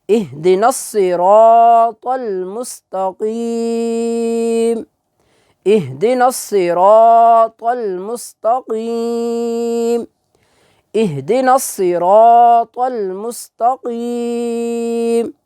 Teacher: تو جب وقف کریں گے تو آخر پر زبر جو ہے اس کو ہم ختم کریں گے